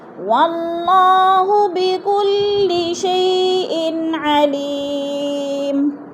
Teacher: دو زیر تنوین ہے، عین حروف حلقی میں سے آ گیا تو ادھر اظہار ہو رہا ہے، غنہ نہیں کریں گے